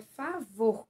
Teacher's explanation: a sílaba tônica aí, vor, é a última sílaba